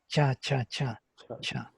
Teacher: tongue goes actually middle tongue goes to the middle palate, to the hard palate